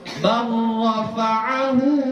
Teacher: Ini berdekatan antara lam dengan ra, tapi enggak satu makhraj. Ya, sama-sama ujung lidah, tapi ujung lidahnya berbeda. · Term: idgham mutaqarib